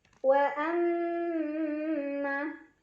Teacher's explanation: Cara bacanya didengungkan, ditahan kurang lebih 2 harokat. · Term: gunnah musyaddadah